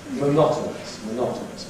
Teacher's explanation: [ ɒ ] weakens to [ ə ]. No stress. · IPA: məˈnɒtənəs